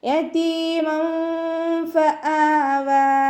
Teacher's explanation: താഇൻ്റെ കൂടെ യാമദ് വന്നു. 2 കൗണ്ട് നീട്ടിക്കൊടുക്കുക. മീമിന് ഫതഹ തെൻവീനാണ് വന്നിട്ടുള്ളത്.